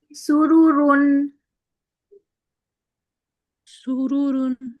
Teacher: را بھی پر کریں گے کیونکہ پیش کے ساتھ بھی را پر ہوتا ہے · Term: موٹا ہوتا ہے